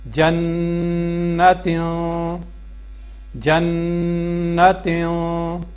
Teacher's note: نون کی آواز کو یہاں پہ ہم غنہ کریں گے تو نون کی آواز کو جو ہے واضح پڑھیں گے، اور جو تنوین کی جو آواز ہے وہاں پہ جب ہم اخفا کریں گے تو آواز کو واضح نہیں پڑھیں گے، آواز کو چھپا کے پڑھیں گے